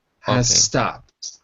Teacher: if you're speaking quickly you could drop the Z